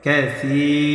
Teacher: খয়রান কাসীরা, কাসী, সা ইয়া জের সি, জেরের পরে ইয়া সাকিন মাদের হরফ। আর মাদের হরফ হইলে এক আলিফ নিয়ে পড়তে হয়। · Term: মাদ্দে তবাই